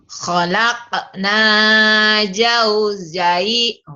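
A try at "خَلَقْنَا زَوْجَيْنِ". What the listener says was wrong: Mana jim, mana jai. Hai. Mana jim, mana jai. Kok sama saja. Kalau sama kenapa harus ada huruf yang berbeda? Khalaqna zawjain. Khalaqna zawjain.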